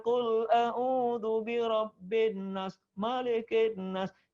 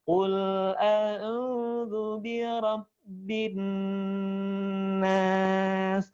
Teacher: Nunnya dikasih warna, tahan di rongga hidung, 2 ketukan. Bin setelah 2 baru nas.